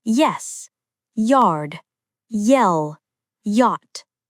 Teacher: This is a consonant-like glide, not a full vowel, but it behaves like the first part of many diphthong-type sounds. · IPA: /j/